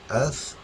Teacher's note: ہمیں یہاں پہ بھی تھوڑا سا فرق رکھنا ہے. سا کو ایسے پڑھنا ہے کہ ہماری جو زبان ہے تیت کے سینٹر میں آ جائے